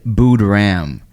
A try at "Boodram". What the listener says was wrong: It's Boodram. You're pronouncing it like B-U-D-H.